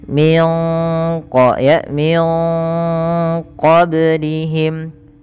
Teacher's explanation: suara nunnya disamarkan ke qaf, maka terdengar bunyi ya. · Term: ikhfa